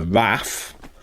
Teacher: little kids will often call the giraffe a raff by leaving off the unstressed syllable